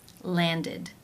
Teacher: the ending is pronounced with the I as in sit vowel and the d sound. For example, the verb to land.